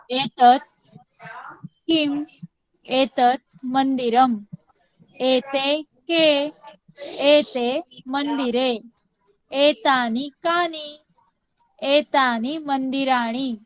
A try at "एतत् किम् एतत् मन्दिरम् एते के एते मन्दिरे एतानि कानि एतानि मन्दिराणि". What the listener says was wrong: सुंदरम।